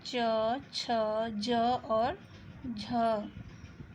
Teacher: तीसरा स्पर्श संघर्षी, जिन व्यंजनों के उच्चारण में स्पर्श का समय अपेक्षाकृत अधिक होता है और उच्चारण के बाद वाला भाग संघर्षी हो जाता है